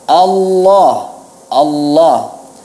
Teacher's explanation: Allah itu diucapkan dengan tafkhim tapi tidak perlu seperti hendak menelan